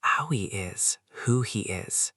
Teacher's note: E equals he. The H and who and he often disappears. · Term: extreme elision